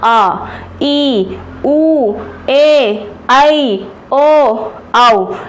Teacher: इन्हें बोलने में दो मात्रा का समय लगता है। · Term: दीर्घ स्वर